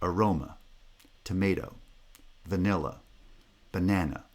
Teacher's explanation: stress is on the second syllable because it's the first syllable of the foot